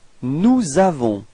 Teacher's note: there is a small link between this S and A. That's what we call la liaison.